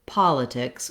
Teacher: looking at the word politics, we have first syllable stress. The pol syllable is long, and the litix syllables are short and have reduced vowels.